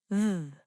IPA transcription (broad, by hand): ð